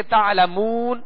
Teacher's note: یہاں مد عارض ہوگی، اسے ہم کھینچیں گے تعلمون. مگر تعلمون یہاں وہ مدہ ہے، اور وہ مدہ کو جب ہم دراز کریں گے تو دونوں ہونٹوں کو کامل گول کریں گے، ورنہ مجھول ہو جائے گا.